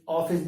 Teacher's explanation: ऑफिस है, ये जो ध्वनि चिन्ह है, इस ऑफिस ना ये अ है ना ओ है, तो बीच का ध्वनि चिन्ह